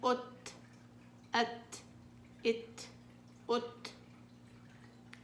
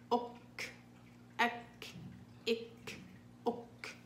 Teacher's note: التاء والكاف حروف شديدة مهموسة في حال السكون. طيب همزة فتحة تاء سكون ات، همزة كسرة تاء سكون ات ات ات، همزة ضمة تاء سكون ات ات ات ات.